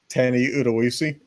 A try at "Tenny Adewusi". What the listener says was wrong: Then why is there an A at the beginning of his name?